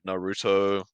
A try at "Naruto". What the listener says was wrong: No, you just said it slowly, like as if it's a difficult word to say. Naruto. It's Naruto, bro.